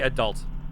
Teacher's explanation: the stress on the second syllable